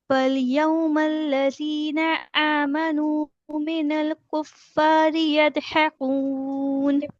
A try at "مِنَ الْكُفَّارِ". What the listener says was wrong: Minallah मीम की जेर बारी करें, मेनल नहीं पढ़े। मीनल कुफ्फारी।